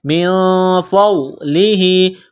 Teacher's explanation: نون ساکن کے بعد فا ہے، حروف اخفا ہے تو نون ساکن پر غنہ کریں گے